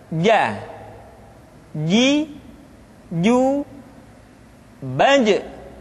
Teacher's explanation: dikeluarkan dengan menyentuhkan tengah-tengah lidah dengan langit-langit · kalau kita melihat sifat yang dimiliki huruf ja dia tidak boleh mengalir nafas